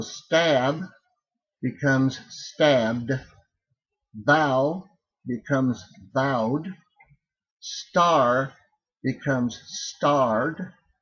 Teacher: If you have that softer consonant sound, L, R, W, D, H, V, and Z, then you pronounce that final consonant as D, and you don't pronounce the vowel